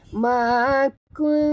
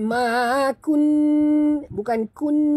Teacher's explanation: Sembunyikan bunyi nun ke dalam ta disertai dengung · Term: ikhfa hakiki